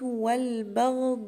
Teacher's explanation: مد واجب متصل لأن المد والهمزة جايين مع بعض في كلمة واحدة